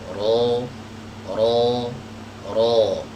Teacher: Jadi tenggorokannya menyempit, ya, kemudian lidah bagian belakangnya ini menegang. Nah, ini cara mengucapkan huruf ro ya yang tepat. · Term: ro yang tebal